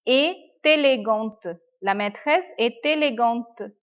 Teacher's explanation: It is starting with vowel. So we are joining the letter T.